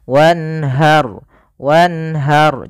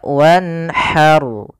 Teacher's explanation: Dari makhrajnya untuk ha kecil dari tengah tenggorokan kita. Kemudian pada lafal ra-nya dibaca dengan ra tebal.